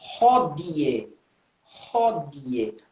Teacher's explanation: com o D dental, não di